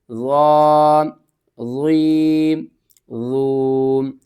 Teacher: ضا کو آپ نے موٹا کر کے بھی پڑھنا ہے اور نرمی کے ساتھ بھی پڑھنا ہے